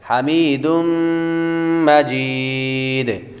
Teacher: تنوین کے بعد میم حروف تو غنہ کر کے پڑھیں گے، تنوین کے بعد میم حروف یرملون میں سے آ رہی ہے تو غنہ کر کے پڑھیں گے.